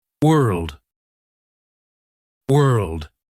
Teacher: move into an L sound and finish with a D